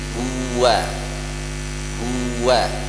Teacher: huruf waw keluar pada dua bibir dan kudu nampak maju ya